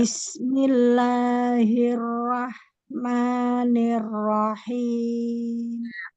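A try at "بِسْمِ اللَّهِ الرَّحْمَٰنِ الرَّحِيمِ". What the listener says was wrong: Ada kurang sedikit lagi tapi sudah mulai ada perbaikan. Nanti jangan terbuka lagi roah gitu atau O tapi ke A lagi. Jadi kalau sudah O, pertahankan sampai pindah sampai selesai hurufnya. Rohmanirrohim. Ro saja, tidak perlu.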